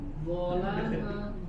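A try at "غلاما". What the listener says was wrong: Gholama. Tidak mengembung ininya apa? Gholama suaranya dari depan karena dia dari ujung lidah. Gho. Jadi bukan dari samping. Gholama.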